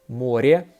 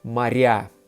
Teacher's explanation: R is softened by ye, море. So you want to keep it soft. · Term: soft consonant